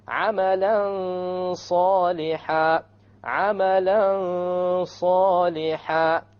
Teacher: You hide the noon behind the sad and you have a ghunnah.